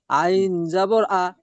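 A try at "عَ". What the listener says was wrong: জি, আইনটাকে একটু গলা দিয়ে করুন। আইন, আইন, আ-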